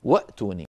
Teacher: اجمعين ك في سوره يوسف واتوني وا هي اصلها وائتني لكن الهمزه الاولى التي هي همزه الوصل سقطت في درج الكلام فبقيت همزه القطع التي هي الساكنه